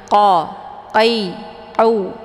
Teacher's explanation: Qi dibaca tebal ya karena posisinya adalah pangkal lidah menempel ke langit yang lembut ataupun langit yang lunak